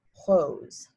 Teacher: that soft back of the throat r sound going right into the o